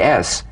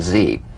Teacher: the S is like the Z except it's unvoiced so it's the same tongue placement as the Z the Z the S is like a gentle Escape of steam